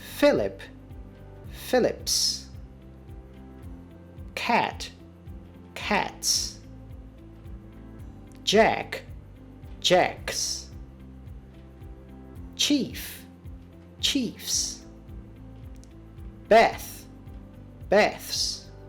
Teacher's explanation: The unvoiced consonant sounds are: /p/... .../t/... .../k/... .../f/... .../θ/. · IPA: /fɪlɪp/